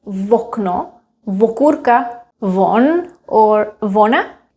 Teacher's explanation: In everyday speech, some Czechs like to add V to the words that starts with O. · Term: prothetic consonant